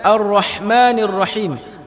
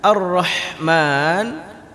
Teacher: hak kecil yang keluarnya dari tengah tenggorokan